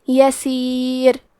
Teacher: یسیر لکی لا، اور ہم یہ کلمہ پہ روکیں گے تو را پہ جزم سے روکیں گے، تو یہاں را کا حکم ہوگا ترقیق، تو ہمیں حرف الراء کو پتلی آواز میں پڑھنا ہے